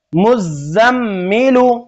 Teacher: زا کو بھی دو بار میم کو بھی دو بار اور میم میں گننا بھی کرنا ہے